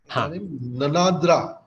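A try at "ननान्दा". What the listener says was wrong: Nananda. No, there is no Repa. Nananda.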